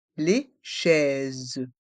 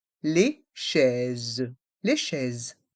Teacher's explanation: Dans le mot chaise, les voyelles A et I se prononcent est, et le S se prononce comme un Z car il est entre deux voyelles, ici le I et le E.